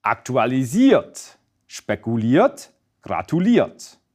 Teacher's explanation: stress falls on the second to last syllable, that is, the syllable with the IER. This is also where the stress remains in the past participle.